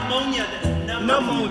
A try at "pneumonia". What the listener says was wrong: Instead of pronouncing it pneumonia, he pronounced it ammonia.